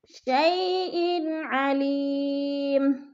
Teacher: شیئن، دو زیر تنوین ہے، تنوین کے ساتھ ہی آگے عین حروف حلقی میں سے آگے ہے تو ادھر اظہار ہوگا، یعنی لفظ کو ظاہر کر کے پڑھیں گے، ادھر غنہ نہیں کریں گے. شیئن علیم، علی، یا ساکن سے پہلے لام کے نیچے زیر ہے تو ادھر یا مدہ ہے.